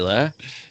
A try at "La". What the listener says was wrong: No, you said it wrong. It's use your throat here.